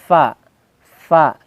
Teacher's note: dari bibir bawah bagian dalam yang bertemu dengan ujung gigi seri bagian atas